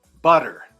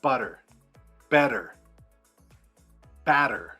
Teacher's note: If the T is in the middle of a word, especially if it tends to be like a double T, we tend to use the tap.